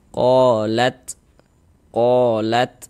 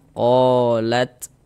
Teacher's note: huruf ta ini salah satu huruf yang memiliki sifat hames. Jadi, ini kan huruf tanya dia sukun.